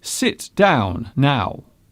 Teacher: the tone at the end of the sentence drops